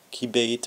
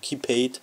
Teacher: einmal mit stimmhaften Plosiv realisiert ist, also mit B, und einmal mit stimmlosen Plosiv P